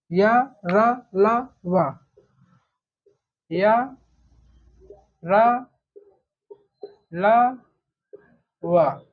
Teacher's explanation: इनकी संख्या 4 होती है, क्योंकि ये चारों व्यंजन जो है 4 जगह से उच्चरित होते हैं। जैसे य का उच्चारण ताल से होता है, र का उच्चारण मूर्धा से होता है, ला का उच्चारण दंत से होता है, वा का उच्चारण ओष्ठ से होता है। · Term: अंतस्थ व्यंजन